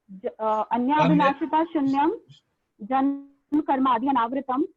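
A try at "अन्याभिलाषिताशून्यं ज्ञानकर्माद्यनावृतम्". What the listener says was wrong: जन्म नहीं है माता जी, ज्ञान.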